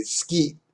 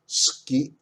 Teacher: a vowel like i or you between such voiceless consonants as k s t p and h is whispered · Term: voiceless vowels